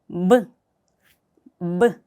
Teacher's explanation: 입술을 붙였다가 강하게 떨어뜨리면서 내뱉는 소리다. 이때 공기의 뱉음은 하나도 없다라고 생각을 하시면서 연습을 하시면 돼요.